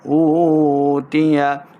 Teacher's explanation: واو ساکن سے پہلے پیش ہے تو واو مدہ، ہم اس کو 2 حرکات لمع کریں گے